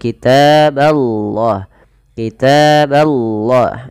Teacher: Kata 'allah' didahului oleh fathah, sehingga kata Allah ditebalkan, tetapi huruf 'b' tidak boleh ditebalkan, teman-teman.